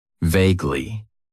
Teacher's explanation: It has 2 syllables. And the stress is on that first syllable.